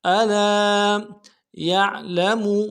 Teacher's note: لام کے ساتھ الف مدہ ہے، ایک الف دار میں کھینچیں گے. الا یعلم یا کو عین کے ساتھ ملانا ہے، عین کو موٹا ادا کریں گے، یا لام کو نرم سے ادا کریں گے، میم کو نرم سے ادا کریں گے.